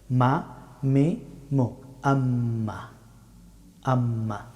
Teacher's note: মিম হরফটি উচ্চারিত হয় দুই ঠুট বন্ধ করে তবে টুটের শুকনা অংশ থেকে মিম হরফটি উচ্চারিত হয় মা মি